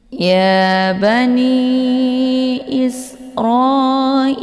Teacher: Karena ada mad tabi'i kemudian berhadapan dengan hamzah di lain kalimat. Maka mad jaiz munfasil ini dibaca panjang, boleh 4 atau 5 harokat.